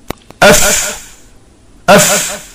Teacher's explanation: This emanates by touching the lower edge of the upper teeth to the inside of the lower lip